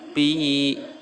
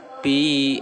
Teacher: Ini adalah mad tobi'i atau disebut dengan mad asli. Cara membacanya dua harokat.